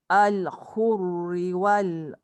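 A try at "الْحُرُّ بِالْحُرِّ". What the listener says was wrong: Al-hurru bil. Jangan moncong dekat ra. Yang pertama tu bolehlah muncung sebab ra baris depan. Yang kedua tu tak boleh muncung sebab ra baris kasrah.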